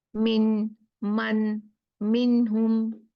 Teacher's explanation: नून को क्लियर पढ़ देते हैं बगैर गुन्ना के। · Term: इजहार